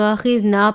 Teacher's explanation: تو آخذنا، الف سے پہلے زبر ہے الف مدہ، چھوٹی مد ہے 2 یا 3 الف کے جتنا لمبا کر کے پڑھیں گے، اور جب آپ پڑھیں گے تو آپ نے نا نہیں پڑھنا، یعنی آواز کو ناک میں نہیں لے کر جانا، تو آخذنا پڑھنا ہے، لمبا بھی کرنا ہے لیکن آواز کو ناک میں نہیں لے کر جانا